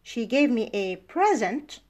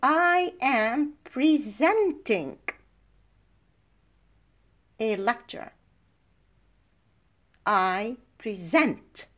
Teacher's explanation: present, the stress is on the second syllable and makes it a verb, and the meaning is completely different from present, which is either she gave me a present, a noun, or she is present.